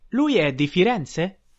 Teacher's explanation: We ask a question and we use rising intonation at the end of the sentence.